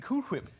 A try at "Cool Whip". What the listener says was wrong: You're putting a lot of emphasis on the H.